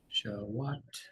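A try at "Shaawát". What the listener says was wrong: Really close. It's long, low first A, and then short high second A. Shawat.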